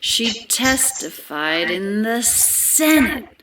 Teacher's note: The pitch of her voice, the high pitches of her voice are getting higher.